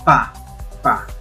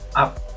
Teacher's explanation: En la oclusiva el aire sale con fuerza, en la implosiva el aire se cierra, se corta el paso del aire.